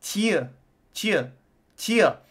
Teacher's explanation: It's got like a Y. It's not a oo. It's got more of like a Y vowel.